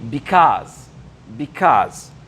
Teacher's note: Et là, avant de rentrer dans la blague, because, pourquoi en anglais on dit because, et vous voyez qu'il y a une intonation ici à la deuxième partie du mot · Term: accent tonique